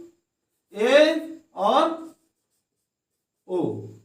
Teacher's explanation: वे स्वर वर्ण जिनके उच्चारण में मुख आधा बंद रहता है अर्ध संवृत स्वर कहलाते हैं